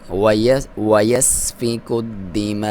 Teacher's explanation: مد واجب ہے، 3 سے 5 الف تک لمبا کر سکتے ہیں۔ دال کو دبا کے پڑھیں گے کیونکہ اس پہ شد ہے،